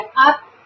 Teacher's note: Acá. Esta U de up se pronuncia casi como una A cerrada.